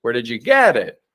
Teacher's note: typically we would stress get the verb